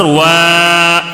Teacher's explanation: کیوں کھینچ رہے ہیں؟ کھڑا زبر ہونے کی وجہ سے ایک الف کھینچ کر پڑھیں گے